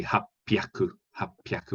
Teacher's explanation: hapyaku with a plosive p